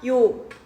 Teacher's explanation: 요 같은 경우는 반모음 이랑 오가 쓰인 거야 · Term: 이중모음